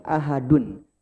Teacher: itu adalah nun sukun tambahan yang muncul di akhir kata secara pengucapan. Maksudnya adalah dia munculnya cuma di mulut. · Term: tanwin